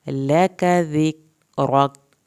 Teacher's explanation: لک کاف کو پتلا پڑھنا ہے، کاف کی زبر کو لمبا نہیں کرنا ہے۔ ذک، کاف کو ہلانا نہیں ہے، را کو پر کر کے پڑھنا ہے، یہ کاف ساکن آخر میں نہیں ہلے گا۔